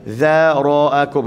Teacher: jangan kita terpengaruh dengan zal yang lembut, kita ra pun lembut juga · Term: ra tebal